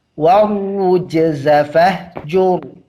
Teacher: di ayat kelima ra-nya tebal semua karena ra-nya dhammah dan ra-nya sebelumnya dhammah.